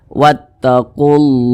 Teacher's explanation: panjangnya itu dua harakat atau kira-kira dua ketukan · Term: Mad thii